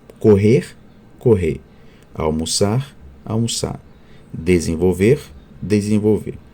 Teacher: suprimido Especialmente nos infinitivos verbais correr correr almoçar almoçar desenvolver desenvolver quando a gente suprime né a gente alonga vogal final e damos mais intensidade essa vogal · o r pós-vocálico independentemente da forma como é pronunciado tende a ser suprimido Especialmente nos infinitivos verbais